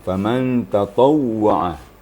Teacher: Waw bertasydid itu mempengaruhi kepada bibir kita. Jadi bibir kita lebih nampak sedikit daripada membaca waw yang berbaris biasa. Waktu kita bertasydid, waw bertasydid, maka bibir kita lebih ada reaksi gitu ya.